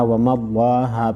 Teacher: لفظ اللہ کو زبر کی وجہ سے موٹا پڑھیں گے